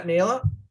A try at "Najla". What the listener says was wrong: Thanks. It's pronounced Najla. You say the J.